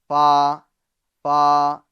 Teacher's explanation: اوپر کے دانتوں کے کنارے اور نچلے ہونٹ کے تر حصے سے فا ادا ہوتا ہے